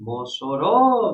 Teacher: Mossoró, veja, a sílaba tônica é o ró, é a última.